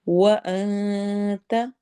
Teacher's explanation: انت میں نون کی آواز کو چھپائیں گے · و میں ہون گول ہوں گے